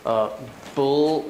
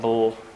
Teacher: in the middle of page two some north american aspects um the l in american english sometimes is kind of unclear because the jaw is kind of raised up